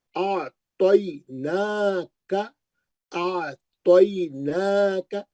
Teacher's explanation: नून पे खड़ा जबर है, 2 हरकत पढ़ेंगे